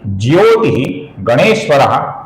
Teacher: ज्योति के विसर्ग का आगे ग आने के कारण अपूर्ण र बना है।